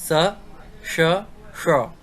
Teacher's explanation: ये दंत सा होता है, इसे दांतों के सहारे बोला जाता है। श होता है, ये तालव्य होता है, तालु से बोला जाता है। और श होता है मूर्धन्य, मूर्धा से बोला जाता है।